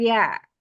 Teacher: Ya-nya huruf ya jangan tebal, bukan yo, tapi ya.